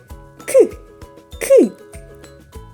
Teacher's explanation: звук к приголосний бо повітря зустрічає перешкоду у вигляді язика